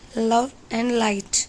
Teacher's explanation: It is alveolar lateral approximant sound.